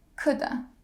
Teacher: Could have, could've, or coulda. All the way reduced to the schwa.